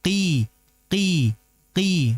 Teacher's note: Dia tidak memiliki sifat itbaq. Dia hanya memiliki sifat isti.